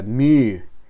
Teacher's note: letra se debe pronunciar con una u francesa